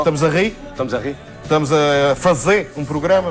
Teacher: eles estão falando que eles tiram os rres finais